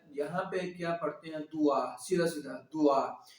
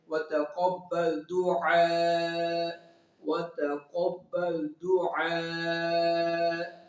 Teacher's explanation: ہر عین کی جو ساؤنڈ ہے حلق کے درمیان والی حصے سے نکلے گی